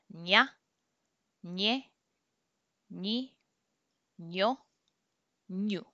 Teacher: Always pretend like there's like a Y right after the N. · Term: enye